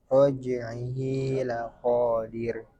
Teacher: Dipanjangkan seukuran dua harakat dan disamakan seperti mad thai. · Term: mad silah sugro